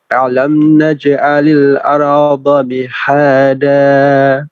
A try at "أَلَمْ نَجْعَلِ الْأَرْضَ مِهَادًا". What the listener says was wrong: Alam itu hamzah ya, hamzah. Hati-hati dengan mim sukun, hati-hati ketika mim sukun dengan mim baru dipanjangkan, atau mim sukun ketemu dengan ba baru dipanjangkan. Selain dengan itu jangan sampai dipanjangkan mimnya.